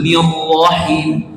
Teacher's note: Ro-nya tebal dari awal, bukan nir-ro, tapi nir langsung tebal.